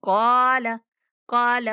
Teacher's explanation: काफ को मोटा पढ़ेंगे और खींच कर पढ़ेंगे। क़ाल क़ाल। ऐसे नहीं पढ़ना कि लाम भी खींचा जाए।